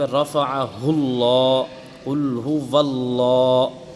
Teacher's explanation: لفظ اللہ کو جو ہے ہم پر کر کے پڑھ رہے ہیں، موٹا کر کے پڑھ رہے ہیں